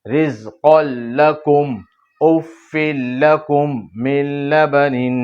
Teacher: 2 پیش کی تنوین کے بعد لام، گنہ نہیں ہے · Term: ادغام بلا غنہ